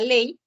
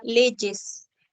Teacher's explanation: puede tener sonido vocálico como la palabra ley o puedes tener e sonido consonántico cuando representa la fricativa palatal Sonora